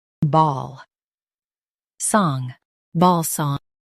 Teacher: Stress ball and keep song soft.